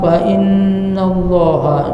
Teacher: Allah dibaca dengan tebal karena sebelumnya baris atas.